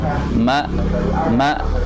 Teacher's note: perlu ditekan sedikit ya, sampai ke tenggorokan bagian bawah, yaitu ketika kata ma, tapi jangan gantung.